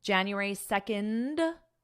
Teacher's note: you just basically add a D sound on the end